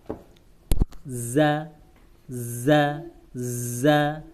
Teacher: Kemudian agak ditahan sedikit anginnya supaya bukan sa, tapi za